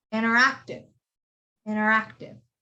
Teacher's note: the t is silent because it comes after an n